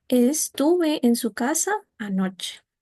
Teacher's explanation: Como en el ejemplo de aquí, estuve en su casa anoche, sube, se mantiene y vuelve a bajar · la entonación va a subir, se va a mantener y luego vuelve a bajar